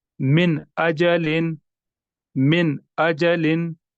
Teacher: ठीक, यहाँ पर मैंने नून को बिल्कुल जाहिर करके पढ़ा, मैंने ऐसे नहीं पढ़ा मिन अजलिन, यानी नाक में मैंने आवाज नहीं निकाली, नून साकिन को हमने जाहिर करके पढ़ा